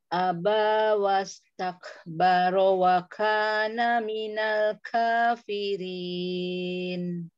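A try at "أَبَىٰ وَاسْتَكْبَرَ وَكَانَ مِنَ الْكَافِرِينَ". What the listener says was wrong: Wastakbaro roro tebal. An aba wastakbaro wa kana. Ro-nya yuk ditebalkan, lanjut.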